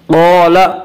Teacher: قال، الف مدہ، الف ہمیشہ مدہ ہوتا ہے، الف سے پہلے زبر ہوتا ہے، الف مدہ کو 1 الف کے برابر کھینچ کر پڑھیں گے۔